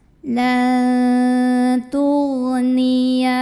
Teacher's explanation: nun sukun ini dibunyikan samar-samar menuju huruf ta sambil dengung. Nah ini gak terlalu dengung, gak terlalu jadi masih dekat dengan huruf nun, huruf ta tuh ya. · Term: ikhfa aqrab